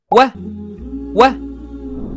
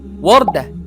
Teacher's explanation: It's similar to the English W in water, but in Arabic it's always smooth and rounded, never mixed with a W sound.